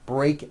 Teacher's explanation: break ends with an unvoiced K sound there's no voicing on that K